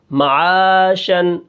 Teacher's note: بیچ میں الف مدہ ہے، اس کو ہم کیا کریں گے؟ ایک الف کے برابر کھینچ کر پڑھیں گے۔ آگے شین دو زبر شن، یہ نون کی آواز پیدا ہو رہی ہے، یہ نون تنوین ہے لیکن دو زبر ہے، ہم دو زبر کو حالت وقف میں الف سے بدل دیں گے، معاشن سے معاشا، ٹھیک ہے۔